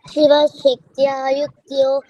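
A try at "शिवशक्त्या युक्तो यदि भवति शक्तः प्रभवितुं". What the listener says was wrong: యుక్తో యావత్తు లేదు.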